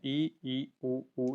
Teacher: संवर्त में जीभ उतनी अधिक ऊपर रहती है कि मुंह से श्वास निकलने में अवरोध तो नहीं होता है परंतु उसके निकलने के मार्ग की चौड़ाई कम हो जाती है। इ ई उ ऊ यहां पर आएंगी।